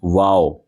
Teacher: मीम और वाओ दोनों होठों की गोलाई से अदा होता है। वाओ इसके अंदर आपके हंठ मिलते नहीं है। वाव बल्कि दोनों होंठ गोल हो जाते हैं और गोलाई से वाओ अदा होता है।